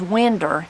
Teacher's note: the r sound is added to the end of words the end in o w